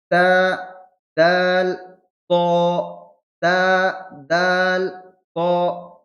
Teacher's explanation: জিহ্বার আগা আর দুই দাঁতের গোড়া, ওপরের দুই দাঁতের গোড়াতে ঠেকবে। তা, দাল, ত, তা, দাল, ত, কিন্তু দাল অক্ষরটি উচ্চারণ করার সময় 3 আলিফ টান দিয়ে পড়তে হবে।